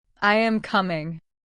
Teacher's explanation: Your voice goes down on coming. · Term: falling